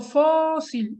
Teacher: Y entonces aquí me doy cuenta por qué una tiene acento y la otra no. Fósil es grave porque la sílaba tónica es la penúltima. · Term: palabra grave